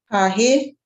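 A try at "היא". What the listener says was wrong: There you go. Ha-he.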